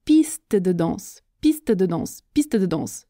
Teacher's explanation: Quand je parle vite, la difficulté est l'enchaînement des sons t, d.